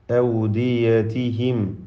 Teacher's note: സാകിന മീമിനെ ഇൽഹാർ ഷഫവി നൽകി മണിക്കാതെ വെളിവാക്കണം